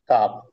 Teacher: জিহ্বার গুড়া হতে একটু আগে বাড়িয়ে তার বরাবর উপরের তালুর সঙ্গে লাগিয়ে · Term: মাখরাজ